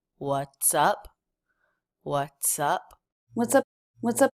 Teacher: [Music] and all of the sounds are pretty smooth and connected we have the TS consonant cluster here linking into the uh vowel